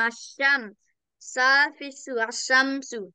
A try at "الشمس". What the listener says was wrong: Not sa, sin. Sin, peso. Ashamsu. Ashamsu.